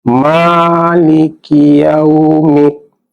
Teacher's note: ada mad asli, panjangnya 2 harokat atas 1 alif